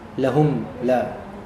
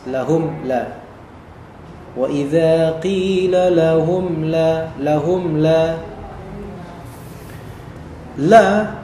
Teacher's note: disebut izhar syafawi yaitu benar-benar nampak mimnya